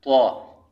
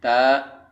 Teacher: تو کو ہم پر پڑھیں گے تو تا سے تمیز ہو جائے اس کی، حالانکہ دونوں کا مخرج ایک ہی ہے